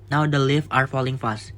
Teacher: Jadi puisi ini memiliki irama yang relatif teratur, mendekati iambic tetrameter. Artinya setiap baris terdiri dari 4 ketukan dengan pola unstressed dan stress.